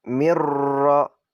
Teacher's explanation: Nah, di situ ada nun mati bertemu dengan ra. Dan itu adalah hukum bacaan idgham bila gunnah. Nah, idgham bila gunnah ini apabila nun mati atau tanwin bertemu dengan lam dan ra.